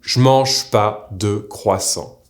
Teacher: the subject pronoun JE will often become a single J sound or even SH sometimes